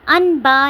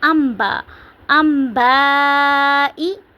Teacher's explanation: اوپر چھوٹا سا میم لکھا ہوا ہے تو نون کی آواز کو میم میں بدل دیں گے۔ ان با نہیں پڑھیں گے، ام با، ام با ای، نون کو میم کی آواز میں پڑھنا ہے، یعنی کہ نون کو نہیں پڑھنا، ہم نے اوپر جو میم لکھا ہوا ہے چھوٹا سا اس کو پڑھنا ہے۔